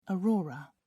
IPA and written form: ɔːˈrɔːrə (aurora)